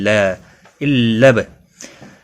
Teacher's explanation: الب لام کو با کے ساتھ ملایا جائے گا، با ساکن پر قلقلہ بھی ہوگا۔